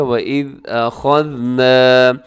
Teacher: اس میں خا کو موٹا رکھنا ہے آپ نے اور ذال کو باریک رکھنا ہے، اس میں سیٹی بھی نہ ہو۔ أَخَذْنَا، نون کو آپ لمبا کیجیے گا کیونکہ اس کے ساتھ الف ہے، یعنی الف سے پہلے زبر ہے، الف مدہ ہے، تھوڑا سا لمبا کیجیے گا۔